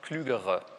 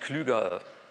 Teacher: Wenn Sie aber klügere haben, das ist jetzt einfach eine Flexionsform dieses Adjektivs, da haben Sie dann plötzlich das R, dann hören Sie das auch als Konsonanten